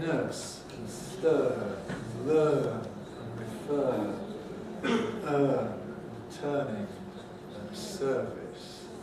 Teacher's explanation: in my kind of English, it's just a mid-central vowel, not too close, not too open, not too front, not too back.